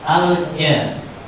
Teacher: al-jah dibaca lam sukun dibaca jelas dinamakan idhar qamari sebab al-alif bertemu huruf jim.